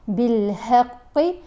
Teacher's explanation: قاف کو ہم نے پر پڑھنا ہے، موٹا پڑھنا ہے